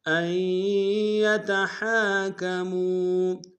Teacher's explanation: میم کو واو کے سامنے لائیں گے، واو مدہ ہے، واو مدہ کے اوپر مد منفصل ہے، کم سے کم دو الف انداز میں کھینچیں گے